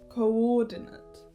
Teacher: Coordinate. The stress is on the 2nd syllable.